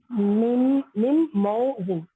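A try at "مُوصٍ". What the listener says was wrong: नहीं, पेश है ना, तो मऊ नहीं होगा, मुंह होगा, ठीक है।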